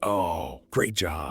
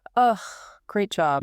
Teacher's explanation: The pitch drops low, the voice becomes completely flat with no emotion, and the volume gets quiet. · Yeah, there are no high notes there at all. Just heavy, flat, quiet disappointment. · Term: scornful sarcasm